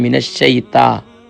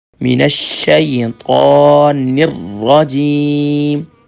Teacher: اب دیکھیں شین بھی مشدد ہے تو ڈبل لیٹر ڈبل ساؤنڈ ہوگا من الشیطان، اکثر پڑھتے ہیں من الشیطا، تا نہیں ہے طا ہے، طا موٹا ہوگا